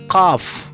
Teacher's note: زبان کا پچھلا حصہ اور کوا مل کر ہوا کو روکتے ہیں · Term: لہاتی